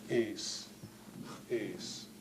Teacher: an S fricative followed by an apostrophe gives you S plus glottal stop